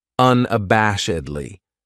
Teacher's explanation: This adverb has 5 syllables, and the stress is on that third syllable, that bash, unabashedly. That second syllable has that schwa, that sound, unabashedly.